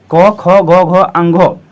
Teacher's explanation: क्योंकि क जो है क हमारा जो वर्ण है स्पर्श व्यंजन वर्ण और ये कवर्ग जो आप देख रहे हैं इस वर्ण का उच्चारण में क्या हुआ, अंदर से जो हवा निकला वह कंठ को स्पर्श करके बाहर निकला